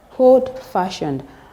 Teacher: Take, for instance, we have old-fashioned. The stress is on fa